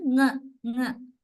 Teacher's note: Back of the tongue touches the soft palate